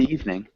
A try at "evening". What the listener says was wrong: So just two syllables instead of three. We wouldn't say evening. We'd say evening.